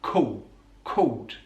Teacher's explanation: He uses the vocalization of the dark L. So with the word called, we're using a dark L, but he vocalizes it. So it becomes a cool called.